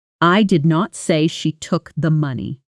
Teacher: Listen to this sentence with flat, even stress on every word, the way a textbook might sound.